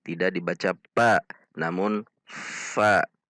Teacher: Gigi seri atas bertemu dengan bibir bawah bagian dalam. Jadi bibir atas tidak ikut pada huruf fa.